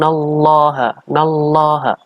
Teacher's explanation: lam jalalah dibaca dengan tafkhim artinya dibaca dengan tebal karena ini ada lamjalalah sebelumnya adalah ada cover harokat fathah jadinya